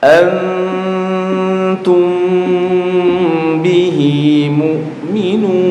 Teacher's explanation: dibaca samar di bibir dan mendengung. Nah, antum antum bih di sini ada dengungnya. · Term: ikhfa syafawi